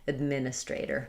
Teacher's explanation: And then we flap that final T.